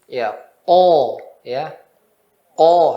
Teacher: Kalau naikkan lidah depan jadinya to, nanti lari ke to dia. Hati-hati. Nggak boleh lidah depan naikkan.